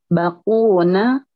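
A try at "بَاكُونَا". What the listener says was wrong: Bakuna. Panjangin ya baknya. Bakuna. Dipanjangkan baknya.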